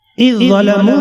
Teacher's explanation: زال مدغم اور ضا مدغم فی ہے اور دونوں متحد المخرج ہیں، لہذا ادغام متجانسین کیا جائے گا